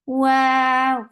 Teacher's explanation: for wow, circle your lips and make it 2 counts long